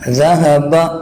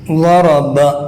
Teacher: قاف میں، ذہب ضرب، ذہب اور ضرب، زال اور ضاد میں، زال کو باریک اور ضاد کو موٹا کر کے ادا کرنا ہے